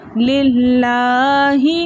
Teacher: لام جلالہ سے پہلے اگر زبر یا پیش ہو تو لام جلالہ کو ہم موٹا پڑھتے ہیں، لیکن یہاں لام جلالہ سے پہلے زیر ہے، اس لیے ہم اس لام کو باریک پڑھیں گے۔ ہم پڑھیں گے للہ، لام کے اوپر کھڑا زبر ہونے کی وجہ سے ہم نے اس کو 2 حرکت کی مقدار کھینچ کر پڑھا۔